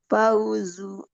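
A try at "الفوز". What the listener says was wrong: Jangan pa, fa. Fauzu.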